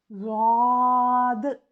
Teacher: ज़बान की साइडें जब पीछे वाली दाढ़ें जो हमारी ऊपर की दाईं तरफ की दाढ़ है या बाईं तरफ की है उस तरफ टच होती हैं